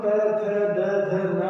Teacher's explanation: जब हम त थ द ध न बोलेंगे तो हमारी जीभ दांतों के पीछे जाकर के चिपक जाती है। आप कोशिश करें, त की जब तैयारी करेंगे उससे पहले जीभ जाके चिपक जाएगी और जब हटेगी तब त की आवाज आती है, इसलिए इनको हम बोलते हैं दंते या दंत।